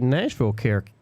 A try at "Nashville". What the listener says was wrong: Nashville. Sounded like you said national.